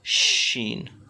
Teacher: Sheen comes out from the middle of the tongue and the middle of the palette